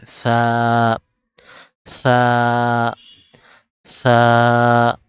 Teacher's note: সা উচ্চারণ হবে সামনের উপরের দুই দাঁতের আগা থেকে